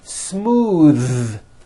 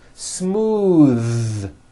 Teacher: Believe it or not, the TH sound in smooth is voiced. Most foreign speakers say this word incorrectly.